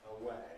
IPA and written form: əˈweɪ (away)